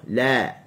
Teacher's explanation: Hujung tepi lidah diletakkan di gusi bahagian atas, kita buka la. Kita sentuh dulu barulah dia lari menjauh. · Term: huruf lam